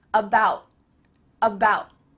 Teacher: That final T gets cut short. Your tongue is at the top of your mouth, but there's no air going through.